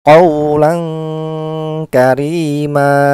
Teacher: Suara dengungnya lebih besar daripada suara samar. Untuk posisinya yaitu pangkal lidah. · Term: ikhfa sugro